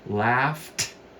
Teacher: that ed there doesn't make the d sound, it makes a t sound